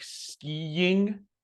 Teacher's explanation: if you kind of envision a little Y sound between the I's, it's actually super helpful